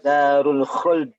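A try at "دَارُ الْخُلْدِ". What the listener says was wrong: Ingat lam itu beniyah ya. Jadi jangan buru-buru ya, tapi juga jangan terlalu dialirkan. Dia beniyah. Ya, nggak apa lah ya, tinggal qalqalahnya diperbaiki.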